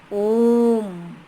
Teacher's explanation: हर्ष स्वर से तिगुना समय लगता है। हर्ष स्वर से 3 गुना, 1, 2, 3। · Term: प्लुत स्वर